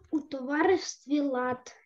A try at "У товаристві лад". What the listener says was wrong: У товаристві. В товаристві. На і наголос. У товаристві лад.